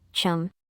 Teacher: read the final consonant sound muum as a non-explosive sound